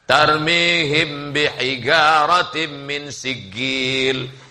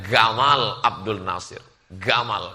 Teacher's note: Orang Mesir nyebut jim itu G. Makanya mereka menyebut Jamaluddin dengan Gamal Abdul Nasir.